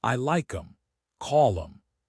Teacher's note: The th is dropped